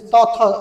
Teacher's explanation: জিহ্বাটা flat থাকে দাঁতের অগ্রভাগে অগ্রভাগে জিহ্বাটা স্পর্শ করে। সুতরাং এটা দন্তবর্ণ।